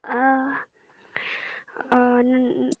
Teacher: Nun sukun bertemu dengan hamzah. Dibaca jelas. Iya. Hukum bacaannya izhar.